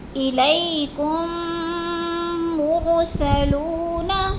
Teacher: میم ساکن کو میم مشدد کے ساتھ ملا کر سختی سے جماؤ کے ساتھ غنہ کے ساتھ پڑھیں گے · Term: ادغام شفوی